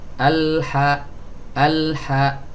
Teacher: bainiyah ini berkaitan dengan suara jadi mengalir suaranya tapi lebih pendek daripada rokhowah